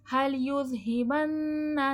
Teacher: فلینظر، نون میں اخفا ہو رہا ہے. هل یذہبن، ذال نرمی کے ساتھ پڑھا جائے گا، نون پر غنہ ہوگا. کیدہ، ہاں پہ الٹا پیش ہے، تھوڑا کھینچ کے پڑھا جائے گا، ماں پہ الف مدہ کھینچ کر.